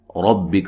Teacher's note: ربک را کو موٹا ادا کریں گے